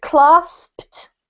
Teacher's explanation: you've got to say the P, and then the ED spelling in this case is pronounced as if it were a T. So the pronunciation is clasped.